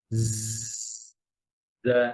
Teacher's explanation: জিব্বার আগা নিচে দাঁতের গোড়ায়